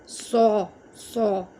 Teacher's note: صاد چونکہ heavy letters میں آتا ہے تو الف کو بھی ہیوی پڑھیں، الف کو بھی آپ موٹا پڑھیں، صو، صو۔